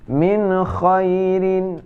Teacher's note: min khairin, nun mati bertemu dengan kha, tidak berdengung juga, yaitu idhar.